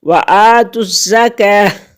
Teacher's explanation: زا مشدد ہے، پیچھے بھی ملے گی، خود بھی پڑھی جائے گی